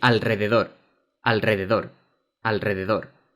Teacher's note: we have the letter R at the end of a word, which is a barely audible sound.